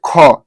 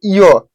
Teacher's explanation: ख बोलने पर ऐसा लग रहा है कि ह आ रहा है, लेकिन वही बोलिए य, देखिए वो में नहीं आ रहा है। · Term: महाप्राण